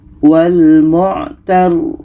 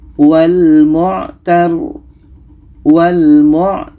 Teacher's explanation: rnya kita alirkan ada tawasut setelah itu baru matikan rnya